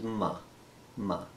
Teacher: labial as it sounds are made with the lips the tongue is not used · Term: labial consonants